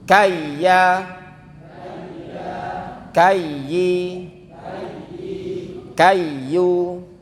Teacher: Ya tasydid ada nabarnya juga ditekan.